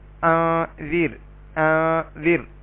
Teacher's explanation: را ساکن اس سے پہلے اسی لفظ کے اندر ہی زیر اصلی ہے تو اس کو بھی ہم باریک کر کے پڑھیں گے